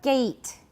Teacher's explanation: So this is a front vowel, but it's a diphthong.